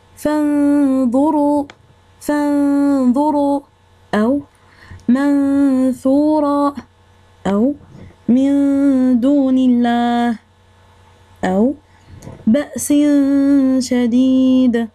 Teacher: خفينا النون ساكنة والتنوين، ودرنا الغنة حركتين. والإخفاء كيقدر يكون في كلمة واحدة أو كلمتين، في كلمة واحدة مثل فانظروا، أو في كلمتين مثل من دون الله.